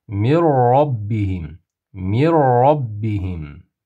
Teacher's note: Nunni roni ichiga kirgizib, ya'ni g'unnasiz idom harfini ichiga kirgizib, g'unnasiz qilib o'qiymiz. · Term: g'unnasiz idg'om